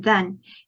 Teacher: And then we have the sound, as in then. It is a voiced consonant. You can feel the vibration. It's fricative and dental also. Similar to sound, we use both of our teeth to make this sound.